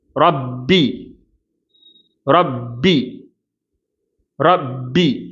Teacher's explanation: ராக்கு மட்டும் ஹெவினஸ் கொடுத்துட்டு பாக்கு லைட்னஸ் கொடுத்துரணும். அப்ப ரப்பி ரப்பி வாய வாய வந்து நல்லா அதாவது நாவினுடைய பிற்பகுதியை உயர்த்தி ரா அப்படின்னு சொல்லணும். · ரா உயர்த்தி உச்சரிக்கப்பட வேண்டிய தஃஹீமான எழுத்து, பா லைட்டாக உச்சரிக்கப்பட வேண்டிய சாதாரணமான எழுத்து. அப்போ இதை வந்து எப்படி வாசிக்கக்கூடாதுன்னா ரொப்பி அப்படின்னு ராவை கடுமையாக உச்சரித்து பாவையும் கடுமையாக உச்சரிக்கக்கூடாது.